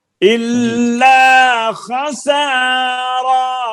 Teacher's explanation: را زیادہ لمبا ہو گیا، جتنا خسا اتنا ہی را. الا خسارا، اس سے زیادہ لمبا نہیں کرنا.